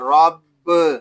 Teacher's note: را کو پر پڑھیں گے کیونکہ را کے اوپر زبر آ گیا ہے